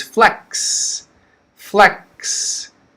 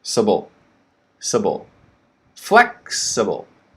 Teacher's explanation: the stress is flex flex and then it gets quick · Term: major stress